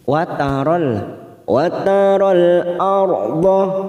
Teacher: ra sukun yang didahului fathah kita baca tafkim